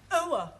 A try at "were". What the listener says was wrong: Try again, but this time, don't say ower, just were. Were.